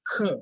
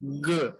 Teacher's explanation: খর ক্ষেত্রে আমাদের হচ্ছে ভোকাল কোডটা যেটা সেটা কাঁপবে না কিন্তু গর ক্ষেত্রে এটা কাঁপবে